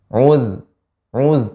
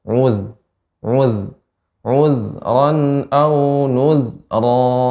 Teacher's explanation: Zal ya mengalir, sifat rakhawah ya. Uz tapi tipis.